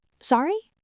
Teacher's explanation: A simple phrase to use is sorry. You say it with a rising tone.